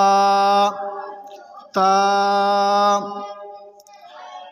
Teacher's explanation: تا کو زبان کی نوک اور اوپر کے دانتوں کی جڑ سے ادا کریں گے